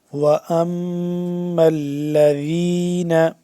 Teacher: میم یہاں پہ مشدد ہے، میم آگے لام کے ساتھ مل رہا ہے